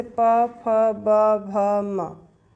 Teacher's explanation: जिन व्यंजनों के उच्चारण में दोनों ओठों द्वारा श्वास का अवरोध होता है ओष्ठ व्यंजन कहलाते हैं,